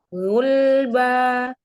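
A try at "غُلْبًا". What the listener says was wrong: Tadi agak campur dengan suara hidung bomahnya.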